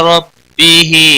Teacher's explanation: ہا کے نیچے کھڑی زیر ہے ایک الف کے برابر کھینچ کر پڑھیں گے